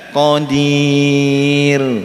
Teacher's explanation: Kalau ini tarkik. Qadir tipis, ra-nya tipis.